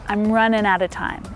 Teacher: And time is a stressed word there, so we hear it really clearly.